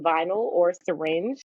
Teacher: Even when Y is functioning as a vowel, like in vinyl or syringe, you hear schwa taking the place of the Y as it's working as a vowel.